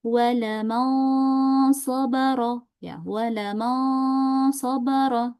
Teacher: Jadi enggak terlalu panjang tempo ghunahnya. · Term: ikhfa hakiki